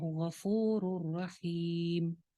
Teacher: وَاللَّهُ غَفُورٌ رَحِيمٌ. یہاں پہ بھی مد عارض آ جائے گی، میم ساکن کر رہے ہیں، پیچھے یا مدہ ہے تو لہٰذا مد عارض آ جائے گی